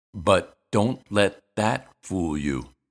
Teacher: Here we see how T is pronounced at the end of a word or syllable when it's followed by another consonant. We actually put our tongue in the position for T, but we don't release it. We use this symbol. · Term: unreleased T